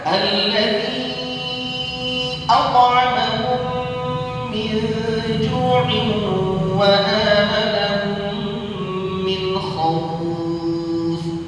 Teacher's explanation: Pada kalimat yang berbeda itu adalah mad jaiz munfasil. Berarti kita baca berapa? 4 harakat. Walaupun dalam tariq tayyibatun nasyr boleh kita baca kasrah 2 harakat.